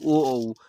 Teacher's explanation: कंठ ओठ जो होता है, कंठ और ओठ से जो बोला जाता है ओ, औ